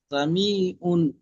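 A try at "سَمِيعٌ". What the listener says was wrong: মিম টান কম হয়ে যাচ্ছে, মিম আরো বেশি বেশি টান দিতে হবে।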